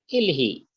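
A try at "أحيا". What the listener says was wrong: No, not e. Auhi,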